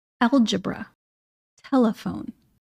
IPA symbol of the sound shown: ə